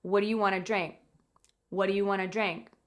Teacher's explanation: Sometimes people will drop that final K sound off the end of the question.